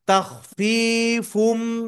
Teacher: তানবিনের পরে মিম আসছে মিম ইদগামে বা গুন্নার হরফ গুন্নার সাথে মিলাতে হবে